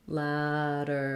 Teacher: we have a flap here. We have first syllable stress and the black cat vowel, lateral.